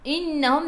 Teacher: nun ada sabdu, tekan ke dalam nun dan dengung 2 harakat. Wajibul gunnah, wajib dengung.